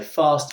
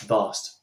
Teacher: It's exactly the same movement in your mouth, but with a f, it's unvoiced, not using these, and a v, it is.